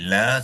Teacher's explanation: La sekali lagi diikut ni alif mad. Bermakna la ni di baca sepanjang dua harakat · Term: mad asli